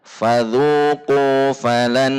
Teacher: Karena huruf nun memang memiliki sifat gunnah. Fadzuqu falanna, sehingga ada gunnahnya.